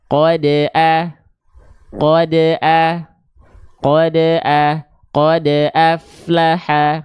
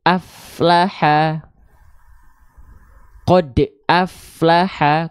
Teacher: contohnya pantulan tertahan itu seperti apa seperti ini aflaha qod aflaha kerasa pantulan dalnya tertahan